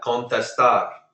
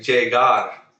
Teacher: do you hear how I'm putting the stress at the end of the word?